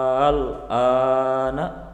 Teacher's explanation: Cara membacanya dipanjangkan selama 3 alif atau 6 harokat. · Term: mad lazim kilmi mukhaffaf